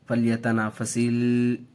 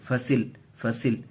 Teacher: سین کو لام سے ملائیں گے، جلد ملائیں گے، کھینچیں گے نہیں، فلیتنافسل نہیں، فصل، فصل۔